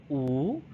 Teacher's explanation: So it's long, so it's lengthened, and then it's high, so your mouth is a bit closed, so oo, and it's a back vowel because your tongue is at the back · So it's a long, high back vowel.